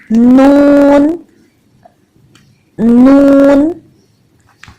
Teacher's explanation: जबान की नोक को ऊपर उठाएं, ऊपर के 2 दांतों के जो मसूड़े हैं वहां पे जबान की नोक को रखें और फिर अदा करें नून नून।